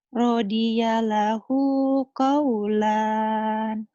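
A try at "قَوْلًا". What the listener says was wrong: Radiyalahu qaula. Qaulan kan? Qaula tuh, Neng. Kan dua patah dibaca satu jika dihentikan. Qaulan itu bagi orang yang belum belajar. Bagi orang yang baru belajar dibaca apa adanya. Jadi kalau dihentikan, radiyallahu qaula. Dua patah. Dibaca satu jika dihentikan.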